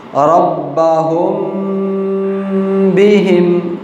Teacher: اخفا، یعنی وہاں پر آواز ناک میں جائے گی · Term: اخفاء